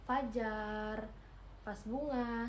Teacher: labiodental ini terjadi ketika bibir bawah artikulator aktif menyentuh gigi atas sebagai artikulator pasif